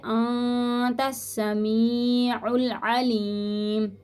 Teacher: تا کو سین کے ساتھ ملائیں گے